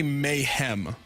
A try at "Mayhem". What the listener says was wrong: But you're saying ham.